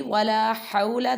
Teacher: ha pronounced from the middle part of throat